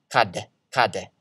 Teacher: you basically just stop the sound after the consonant and then let it aspirate or blow air to get an extra e sound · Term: aspiration